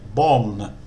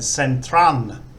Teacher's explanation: But if an English word ends with an L, they just use the standard L equals law ling. And law ling as a final consonant in Thai makes an N sound. So that's why Thais say bon for ball and centran for central.